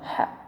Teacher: Ha itu lemah keluarnya di sini, tengah-tengah tenggorokan